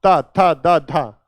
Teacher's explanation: जीभ टकरा रही है दंत पे, तो बेटा ये हो गए दंत।